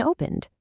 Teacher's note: If it ends in a voiced sound like n, the ed d sounds like a d, like an opened. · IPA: /d/